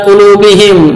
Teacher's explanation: mim sukun bertemu dengan hamzah, bacaan izhar safawi jelas